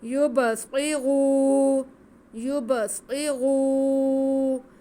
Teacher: یبصری، یبصری، آگے را پہ پیش ہے، را پر پڑھا جائے گا اور ساتھ میں واو ساکن ہے اور را کی آواز کو کھینچیں گے بھی کیونکہ واو مدہ ہے